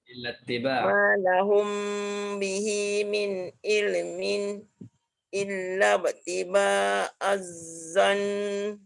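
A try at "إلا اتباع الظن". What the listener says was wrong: Tak kena tu. Illati. Terus masuk ti. Illati. Jangan datang batu.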